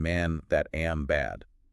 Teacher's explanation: It's that flat, almost nasal sound. It feels very frontal right behind my teeth.